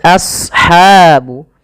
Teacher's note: shadnya tebal karena shad punya sifat huruf isti'la dan idbaq · Kemudian lafal ashabu, as-shad ya, huruf shad tebal, jangan as, jangan sin, tapi as ya, a-nya tipis, shadnya tebal.